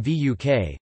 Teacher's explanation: is labiovelar [w] before /u/ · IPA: [wûːk]